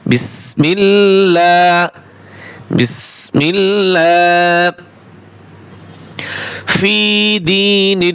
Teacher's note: আল্লাহ শব্দের লামের আগে জের রয়েছে তাই কি হবে পাতলা হবে মোট কথা হচ্ছে জবর অথবা পেশ থাকলে মোটা হবে জের থাকলে পাতলা হবে।